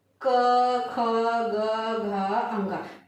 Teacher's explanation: तो जब उच्चारण करते हैं तो इसका उच्चारण कहाँ से होता है, कंठ भाग से होता है। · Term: कंठव्य व्यंजन